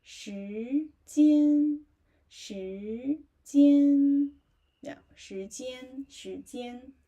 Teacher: Okay, let's say the first one, first word, that is the shíjīan, rising tone. And first tone.